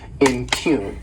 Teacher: This word has 2 syllables and the stress is on that second syllable, impugn